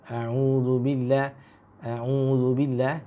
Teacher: Jadi jangan masuk ke hidung. Khaisum, ya. Karena tempatnya di rongga mulut.